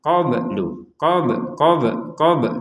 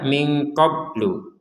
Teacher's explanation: Di sini ada ba yang sukun. Nah, ba sukun ini kita baca dengan pantulan